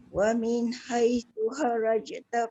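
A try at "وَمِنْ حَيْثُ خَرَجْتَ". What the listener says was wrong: Jangan haraj. Bunda jangan haraj. Kharaja. Kha tebal, ra tebal. Kharaja.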